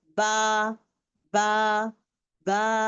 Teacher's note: मेरे दो होठ लगे हुए हैं, लगने वाले होठों को मैं डिस्कनेक्ट कर रही हूँ